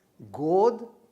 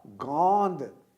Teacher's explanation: अनुनासिक अर्थात जिसमें नाक और मुंह दोनों से प्रश्वास निकलता है, इसको हम कहते हैं अनुनासिकता।